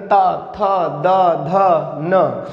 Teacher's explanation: ऐसे ही आप बोल के देखिएगा ता थ द ध न, इनको जब हम उच्चरित करते हैं या बोलने का प्रयास करते हैं तो जो जिह्वा का भाग होता है वो दांतों को स्पर्श करता है, टच करता है, छूता है, इसीलिए इसे ये कहा जाता है दंत व्यंजन या दंती व्यंजन।